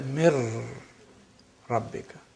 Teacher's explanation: This is complete assimilation. Mir Rabbika, noon completely is lost. It becomes ra.